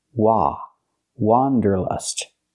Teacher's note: not pronounced wonderlust it's pronounced Wanderlust let's look at the difference the correct pronunciation of this word has the sound a like hot and stop it's an open Sound · For the first vowel, for the first syllable, use the open ah sound, like hot and stop. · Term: open a sound